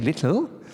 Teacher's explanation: the front one is this clear or light L, and the back one is a dark L. And the distinction is of no significance in English.